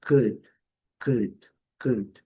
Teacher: Esse u lá do fundo da garganta, bem curto, bem rápido.